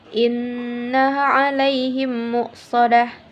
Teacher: ghunnah musyaddadah dikarenakan terdapat huruf nun bertasydid dan cara membacanya ialah dengan mendengungkan dan ditahan dua harokat sebelum menyebutnya jelas huruf nun